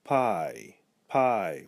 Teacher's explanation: We almost make a Y sound at the end. It's sort of half pronounced. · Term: near diphthongs